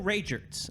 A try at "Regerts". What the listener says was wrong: Now you're saying Ragerts, but it's Regerts, Regerts, It is RA.